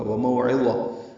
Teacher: واو ہونٹوں کی نا تمام گلائی سے ادا ہوگی. اسی طرح مو، واولین ہے، یہ بھی ہونٹ گول ہوں گے، نا تمام، اس کو زیادہ لمبا نہیں کر سکتے.